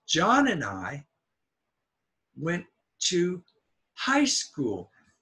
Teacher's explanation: John is a noun so it will be stressed I is not important I is not stressed